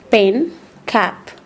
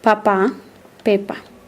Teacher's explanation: This is a voiceless, a stop sound because the obstruction of the air by the articulators. In this case, the lips. That's why it's a bilabial sound.